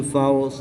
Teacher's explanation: را ساکن سے پہلے زبر ہے اس لیے اس را کو پر یعنی موٹا پڑھیں گے